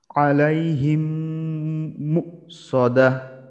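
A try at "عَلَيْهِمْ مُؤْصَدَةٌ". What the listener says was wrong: মাশাআল্লাহ, এটাও সুন্দর হয়েছে, আলাইহিম মুসাদা।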